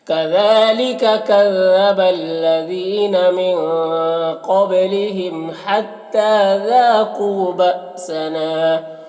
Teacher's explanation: ذا میں الف مدہ ہے، قو میں واو مدہ ہے، دونوں کو ایک الف کے برابر کھینچیں گے۔ بأسنا یہاں پر حمزہ ساکنہ ہے، جھٹکا لگے گا، نام الف مدہ ہے، ایک الف کے برابر کھینچیں گے، تو اس طرح سے پڑھیں گے۔